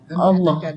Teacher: Dalam jalalah dia baca tebal dua harakat.